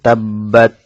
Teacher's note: তাসদিদ হওয়ার কারণে বা দুইবার উচ্চারণ হবে এবং তাসদিদ যুক্ত হরফ উচ্চারণ করার জন্য একটু সময় নেবে